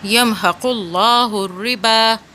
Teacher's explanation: ایک لام کی آواز جو ہے وہ ساکن ہوگی، دوسری لام کی آواز کھڑا زبر سے بنے گی۔